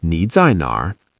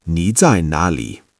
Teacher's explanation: In southern China, sometimes they say Nali instead of nar. It means the exact same thing.